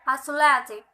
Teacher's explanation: Secondary stress is on the first syllable and primary stress is on the second syllable. The other syllables are unstressed.